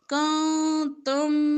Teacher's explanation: نون ساکن کے بعد تا اخفا